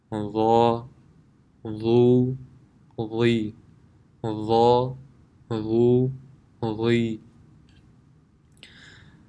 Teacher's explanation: The makhraj of Dha is the tip of the tongue when touching the edge of the upper two front teeth,